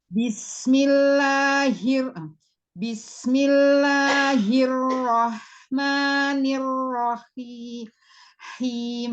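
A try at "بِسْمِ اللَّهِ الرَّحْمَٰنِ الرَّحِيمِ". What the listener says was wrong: Jangan diangkat ketika la, ma gitu.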